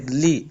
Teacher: ان ناشئۃ اللیل، بعض لوگ پڑھتے ہیں لے لے نہیں کریں گے، لام زیر لی